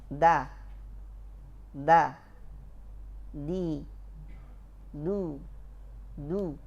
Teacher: Pas lidah kita menempel ke pangkal langit ke pangkal gigi atas, tidak ada suara dan nafas yang mengalir. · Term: dal